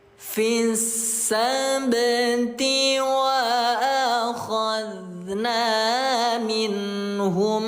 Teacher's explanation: Qalqalah yang ada di pertengahan kalimat qalqalah kecil atau qalqalah sugro. pantulannya tipis mengalir seperti halnya air